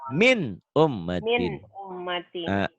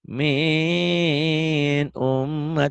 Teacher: Karena nun mati ketemu alif, maka bunyi nun matinya harus dibaca jelas. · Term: Izhar